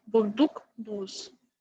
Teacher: Гласные У в якутском и французском лабиализованы, заднего ряда закрытые.